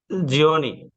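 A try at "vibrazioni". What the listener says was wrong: জিওনি না, এটা হবে সিওনি, কারণ কি, আমরা নিয়ম দেখেছি কি, যদি হ্যাঁ শব্দ শেষে যদি সিওনে মানে জিওনে সিওনে, এই যে সিওনে থাকে, ঠিক আছে, এখানে সিওনে, এটা বহু বচন বিদায় ই হয়ে গেছে, এক বচন হলে এরকম হইতো সিওনে হইতো,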